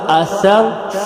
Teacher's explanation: سا زبان کی نوک سے نرم حروف میں سے ہے